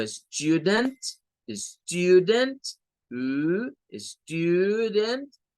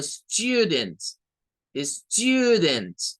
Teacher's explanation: Tiene un sonido como U, muy similar al sonido que nosotros le damos en español, U, pero tiene un sonido en donde se le agrega como la Y, o a veces le ponen, en algunos otros diccionarios le ponen una J acá a la par de la U, y es algo como you, como el pronombre tú, you.